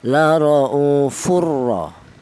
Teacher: Idgham itu artinya menyatu. Cara bacanya tanwin ini langsung menyatu ke huruf ro ini dibaca idgham.